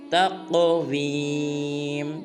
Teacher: قاف کو پر ادا کرنا ہے اور قلقلہ بھی